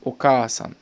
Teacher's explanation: On rajoute un A derrière le K qui va donner Oka-san. Donc on prolonge le A.